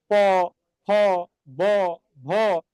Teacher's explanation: যখন উচ্চারণ করছি তখন ঠোঁট দুইটা আটকে যাচ্ছে, বলছে প, ফ, ব, ভ, এই জন্য এটাকে বলছে কি ওষ্ঠধ্বনি। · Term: অষ্ঠ ধ্বনি